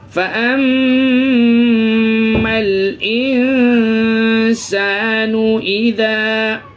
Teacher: نون ساکن کے بعد حروف اخفا کے 15 حرفوں میں سے سین ہے جس کی وجہ سے ہمیں ناک میں آواز کو چھپانا ہے